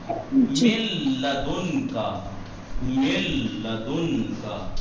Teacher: यहाँ पे नून की आवाज तो नहीं आ रही, मिल लदुन का, मिल लदुन का, ना तो खिंच रहा है और ना ही, ना तो खिंच रहा है और ना ही नून नाक से अदा हो रहा है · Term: इदगाम में बिला हुन्ना